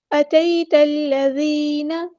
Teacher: أَتَيْتَ الَّذِينَ، یا ساکن سے پہلے زبر آئی ہے، مد لین ہو رہی ہے، یہاں پہ نرمی سے موڑیں گے، اتے نہیں پڑھنا، اتئی، اتیت الذین، تا کو لام کے ساتھ ملا دیں گے، حمزۃ الوصل ہمارا ڈراپ ہو جائے گا